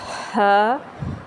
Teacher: ह हलक के दरमियान वाले हिस्से से अदा होता है